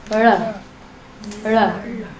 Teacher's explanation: The tongue's curling back and up.